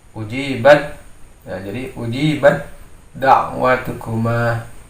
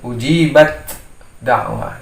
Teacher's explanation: Sini kita sudah memenuhi syarat, yaitu ada huruf ta kemudian bertemu dengan dal, maka dia menjadi hukum idgham mutajanisain. Jadi diidghamkan suara ta ini menjadi huruf dal, sehingga seolah-olah ta ini tidak terbaca. Jadi sifat hamz pada huruf ta ini menjadi hilang, sehingga dia dimasukkan ke dalam huruf dal.